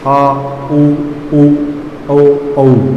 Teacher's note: बोलते समय जीभ का जो पीछे का हिस्सा पक्ष भाग है वो उठता है